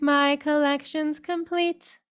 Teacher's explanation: lots of aspiration on those ending consonants so they're understood but not too heavy